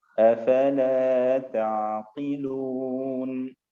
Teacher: Ainnya ditipiskan, kemudian sifat tawasudnya dimunculkan